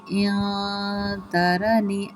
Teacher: باللہ، ٹھیک ہے، باللہ، قوت الا باللہ ان ترنی انا اقل منک، یہاں پہ نون ساکن کے بعد تا آ رہی ہے تو یہاں پہ اخفا کا قاعدہ ہوگا، مطلب نون ساکن کی آواز کو ناک کے بانسے میں چھپانا ہے، ٹھیک ہے، ان نہیں کرنا، اخفا کرنا، اخفا۔